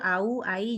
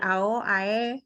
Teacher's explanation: jadi kalau kita tuh bilang au, ai, itu betul au, ai, jangan dari ao, ae, gitu ya